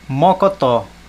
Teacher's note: viam e quando termina com ó mocotó ó terminou com o a sílaba tônica é a última